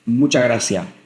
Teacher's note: the s's at end of words just disappear